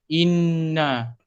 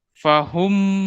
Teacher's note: wajibul gunnah ni bacaannya memang kena wajib dengung lah. So dengan dia punya kadarnya memang 2 harakat.